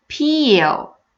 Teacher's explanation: you will feel that you're inserting this Y sound between the long E and the dark L.